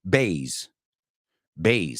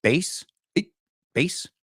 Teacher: now it's a little bit longer, that A, and it's a Z.